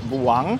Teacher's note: The word Buang originates from the Cebuano dialect of the Philippine language. The first syllable Bu is pronounced quickly and emphasized. The U sound like a short U.